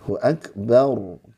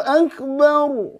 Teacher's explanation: kalau ro tim dibaca gimana tafkim itu ya tebal jadi dibaca angkat rahangnya